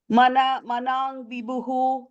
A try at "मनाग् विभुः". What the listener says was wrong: And the manag ig ga sound. There's no in. I'm hearing a slight in sound there. Manag vibhuhu. It's ig manag vibhuhu. G. Okay, just put the G there.